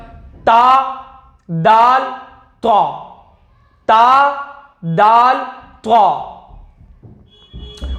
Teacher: सिर्फ हमको इनको मुनफरिद करना है, अलग अलग निकालना है। उसके बाद जबान की नोक और ऊपर के दांतों की जड़ से अदा होते तीन लफ्ज